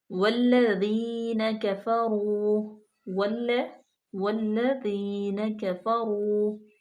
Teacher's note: واو جو ہے اس کو ہونٹوں کی گلائی سے ادا کریں گے